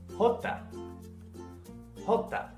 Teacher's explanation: this letter is pronounced as a soft H